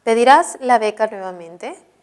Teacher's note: Esta es una oración interrogativa total, ¿no? Puede ser sí o puede ser no la respuesta, por eso es ascendente.